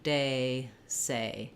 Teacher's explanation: vowel they don't have too much trouble making that diphthong because they just naturally hold the vowel longer and close as they're finishing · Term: gray day vowel